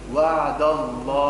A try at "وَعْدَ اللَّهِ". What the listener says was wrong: كيف نقول وعد الله؟ جدد تنتبهوا. وعد. شو عمل في الدال؟ فخمها. الصواب وعد. وعد الله.